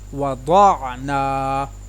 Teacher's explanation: واو زبر وا، ضاد زبر عین ضاع، وضاع، نون زبر الف نا، وضعنا۔ ضاد کو پر ادا کیا، نون کے ساتھ الف مدہ کو ادا کیا